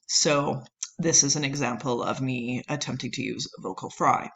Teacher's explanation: it involves a lowering of pitch so instead of that rising intonation there we have a lowering of pitch and it often has this kind of creaky or gravelly sound